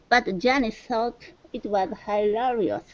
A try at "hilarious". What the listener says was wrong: So instead of hilar, it's hilaire. Okay, with a long A. Hilarious.